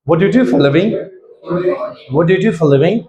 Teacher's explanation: A question, but WH question, not simple question. So, WH question, your tone will go down at the end. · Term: falling intonation